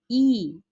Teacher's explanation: ই এই স্বরধ্বনিটা যখন আমরা উচ্চারণ করেছি এটার জিভের অবস্থান হয়েছে কিন্তু সামনের দিকে। আবার যখন বলেছি আ তখন আমাদের জিভের অবস্থান কিন্তু পেছনের দিকে।